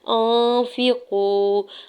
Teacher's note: حمزہ کے زبر کو نون ساکن کے ساتھ ملاتے ہوئے اخفا کریں گے، یعنی آواز کو ناک میں چھپائیں گے